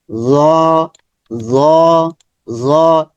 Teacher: জয়ের মাখরাজ হচ্ছে, দেখি আমরা জয়ের মাখরাজ, জিহ্বার আগা সামনের উপরের দাঁতের আগা।